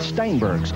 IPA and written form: ˈstaɪnbɜːrɡz (Steinberg's)